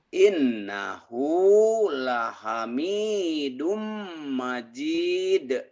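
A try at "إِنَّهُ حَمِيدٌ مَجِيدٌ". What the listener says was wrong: Bapak pinter, kenapa ada la-nya Pak di sini Pak? Jidnya panjang nih Mbak, madari disukun. Matobi'i ketemu satu huruf dihentikan. Bapak suka ketuker. Yang pendek dipanjangin, yang panjang dipendekin. Ini majid.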